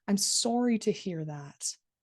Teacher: So if I was to say this genuinely, I would say I'm sorry to hear that. And you can hear that stress on sorry